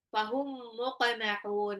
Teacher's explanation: mim sukun ketemu mim itu adalah idgham mimi